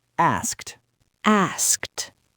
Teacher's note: the word asked ends in 3 unvoiced consonants in a row. S, K, T. Asked.